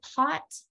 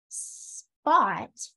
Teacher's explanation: If you say pot and then you say spot, that second one is not gonna have as much aspiration on the huh.